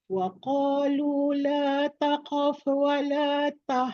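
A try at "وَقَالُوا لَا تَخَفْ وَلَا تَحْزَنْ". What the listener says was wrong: Bukan takqaf. La takhaf. Ringankan kha bukan tekan qaf.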